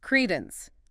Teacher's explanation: Stress on the first syllable. 2 syllables.